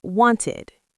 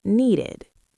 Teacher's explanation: So, we insert a little vowel cushion.